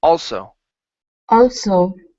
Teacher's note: on this s we want to pronounce an unvoiced S